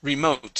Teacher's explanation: remote with the stress at the end of the word